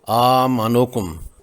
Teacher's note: حمزہ کی زبر کے بعد الف ہے، یہ مد بدل ہو گئی، 2 حرکات لمبا کرتے ہوئے اس کو پڑھیں گے